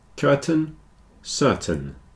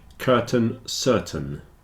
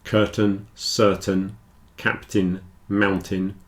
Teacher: the stress is on the first syllable so the second syllable tends to get contracted down a bit and in this case it's a little bit like an e